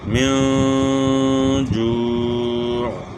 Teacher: من جوع، یہاں اخفاء ہوگا، نون ساکن پہ اخفاء ہوگا ایک الف کی مقدار کے برابر، اور آگے واؤ مدہ ہے اور پھر عین کی آواز کو گلے کے درمیان سے ادا کرنا ہے اور عین وقف کی وجہ سے ساکن ہوگا